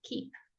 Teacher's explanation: please say the P sound. It doesn't have to be explosive